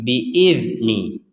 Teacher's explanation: dzal sukun bukan huruf yang harus dipantulkan. Maka kita tidak boleh memantulkan huruf dzal sukun.